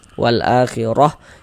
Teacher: Huruf ro memiliki harakat fathah. Maka huruf ro juga dibaca tabkhim, dibaca tebal. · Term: tafkhim